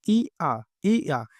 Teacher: य को अगर हम बोले इ आ इ आ तो ये इ और आ से मिलकर बना होता है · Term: अर्ध स्वर